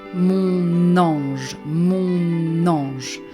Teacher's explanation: there is a liaison between the N at the end of mon and the A at the beginning of ange, because it starts with vowel, and it ends with a consonant, so we do the liaison.